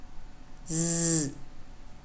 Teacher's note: Voiced alveolar fricative. So you need to think of a sound that is voiced, that is produced at the alveolar ridge, and that is fricative